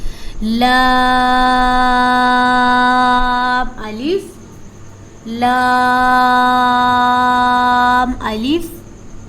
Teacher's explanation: جب ہماری زبان اگلے 4 دانتوں کے مسوڑوں سے لگتی ہے تو لام ادا ہوتا ہے، اور لام کو 5 الف کے برابر لمبا کیا جاتا ہے